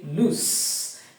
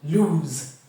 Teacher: the end part which is s e sounds as a voiceless sound s but when it is l o s e lose the end part s e sounds as a voice sound